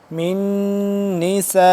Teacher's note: برابر اس مد کو لمبا کریں گے اور میم نون زیر من اس پہ ہم کریں گے غنہ کیونکہ نون ہے مشدد